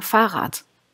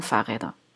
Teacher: Also im Singular haben wir hinten eigentlich eher ein T, wir sagen Fahrrad. Im Plural bleibt das D, wir sagen Fahrräder.